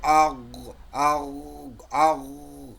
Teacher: হ্যাঁ, গই এটা আরও স্পষ্ট হবে গই দেখেন, এটাকে যদি আমি সাকিন করি, এবারে সাকিন করলে পরে দেখেন ওই যে জিহ্বার ওই সহলকের শুরু থেকে জিহ্বার গোড়াটা একটু উঁচু হবে, উঁচু করে লাগিয়ে জি দেখেন গ গ বলতেই জিহ্বার গোড়া কিন্তু একটা চলেই যাচ্ছে, গ গ উপরে যাচ্ছে। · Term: গয়ন